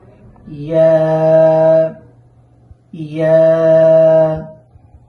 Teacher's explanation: এই ইয়ার মাখরাজ হচ্ছে জিহ্বার মধ্যখান তার বরাবর উপরের তালুর সাথে লাগাইয়া